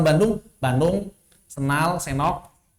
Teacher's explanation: Kalau di Sunda N kalau ketemu D itu hilang D-nya.